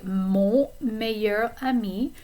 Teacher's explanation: Notice the nasal vowel sound on.